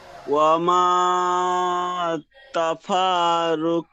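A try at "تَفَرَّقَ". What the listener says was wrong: তাফার, তাফার, ফা টান হবে না। তাফার, ফার যাওয়ার ফার। তাফার, ফাটি রর সাথে যুক্ত করেন। তাফার র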